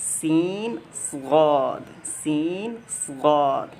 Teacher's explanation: باقی صاد میں استعلاء بھی ہے، یہ بیک آف ٹنگ جو ہے وہ اوپر کی طرف ریز کرتی ہے. ٹھیک ہے، ایلیویٹ کرتی ہے، وہ ایلیویشن ہے.